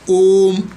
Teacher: यही जो लंबा खींचता है यही प्लुत स्वर के अंतर्गत आता है